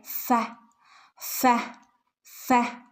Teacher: ഫിന്റെ ശബ്ദം വരുന്നത് മേലെ മുൻപല്ലുകളുടെ അറ്റം താഴെയുള്ള ചുണ്ടിൽ തട്ടുന്നത് താഴെയുള്ള ചുണ്ടിൽ തട്ടുമ്പോഴാണ് ഫഹ് ഫഹ് ഫഹ് ഇനി അടുത്തത് ഓ ഓഫ് ആണ്